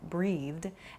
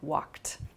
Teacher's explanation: a soft D sound like breathed, and then a more hard T sound like walked